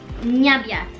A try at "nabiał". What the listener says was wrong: The end is L, remember? Look at the T, which you call it T. But it's a crooked line. So it's L. So it's nabiał.